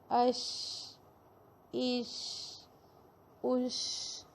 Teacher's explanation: اگر ہم شین کو ساکن کر کے پڑھیں گے تو بھی آواز پھیلے گی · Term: صفت تفشی